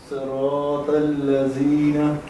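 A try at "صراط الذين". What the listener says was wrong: ہاں سختی نہیں, زبان پہلے باہر نکالنی ہے پھر آواز نکالنی ہے.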